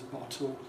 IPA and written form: ˡbɒto (bottle)